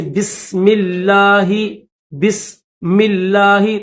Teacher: ٹھیک ہے، جیسے بسم اللہ، بسم اللہ، تو یہاں پر بھی دیکھیں لفظ اللہ سے پہلے جو بسم ہے اس کے نیچے میم کے نیچے زیر ہے، تو اس لفظ اللہ کو ہم موٹا نہیں بلکہ باریک پڑھیں گے